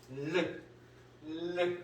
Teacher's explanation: 흐름소리는 공기를 혀의 양옆으로 흘려내보내는 소리입니다.